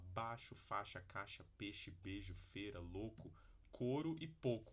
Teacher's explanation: palavras que na verdade as pessoas tendem a produzir como monotongo então é um processo fonológico do português chamado de monotongação essas